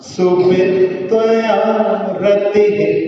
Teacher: जहाँ विसर्ग आ रहा है वहां पर आप थोड़ा सा श्वास छोड़ करके रुके वहां पर